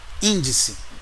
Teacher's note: Índice não é paroxítona terminada em ditongo, índice é proparoxítona